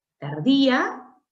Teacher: a evaluar es la palabra tardía tardía tiene un yato acentu porque el acento está en la vocal I no en la abierta a